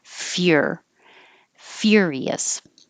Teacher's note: So instead of fur, you're saying fear. Your tongue is going very high, like you're going to say you're.